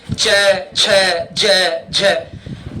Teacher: जीभ और मसूड़े को दबाना पड़ता है बार-बार।